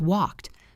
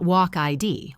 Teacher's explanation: If the verb ends in a voiceless sound like k or p, the ed sounds like t.